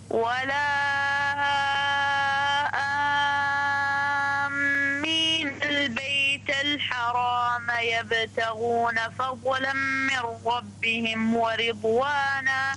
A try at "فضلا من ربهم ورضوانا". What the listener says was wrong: لا تقلقل الضاد. فضلا من ربهم ورضوانا. فضلا من ربهم ورضوانا.